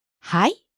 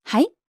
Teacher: If you say it with rising intonation though, it becomes a question.